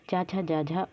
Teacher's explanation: हमारे स्पर्शी संघर्षी व्यंजन के उदाहरण है।